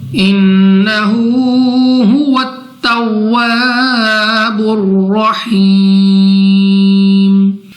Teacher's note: را پر زبر ہے تو را کو ہم پر یعنی موٹا پڑھیں گے.